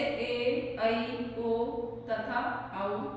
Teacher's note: अर्धसंवृत वे स्वर जिनका उच्चारण करने में मुख द्वार अर्धसंकरा हो जाता है, अर्धसंवृत कहलाते हैं।